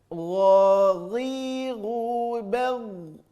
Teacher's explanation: Terasa di ujung tenggorokan keluarnya, tapi lebih lembut saja bunyinya daripada huruf kha. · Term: huruf gha